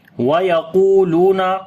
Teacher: qaf we read in heavy sound and also we long due to waw madda